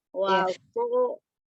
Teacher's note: Ya, hati huruf ko-nya di mana makhrajnya, ujung lidahnya ada di pangkal gigi seri bagian atas, hanya dia dibaca tebal dengan mengangkat pangkal lidah ya